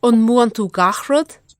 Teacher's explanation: actually the whole sentence has no palatal consonants. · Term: velarized